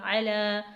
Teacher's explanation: کھینچیں گے، اولائکا، عین زبر آ، لام کھڑا زبر لا، علا، عین کو حلق سے ادا کریں گے ، علا، کھڑی حرکت ہے تو اسے 1 حرکت کے برابر